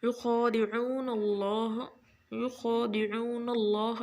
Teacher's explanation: लफ्ज़ अल्लाह से पहले ज़बर है, नून मफ्तूह है, तो हम इसको लफ्ज़ अल्लाह को मोटा पढ़ेंगे।